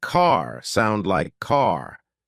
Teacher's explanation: American accent often uses a strong R sound